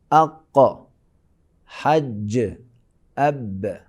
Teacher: بریک لگا کے چھوڑتے ہیں یہ قلقلہ کی وجہ سے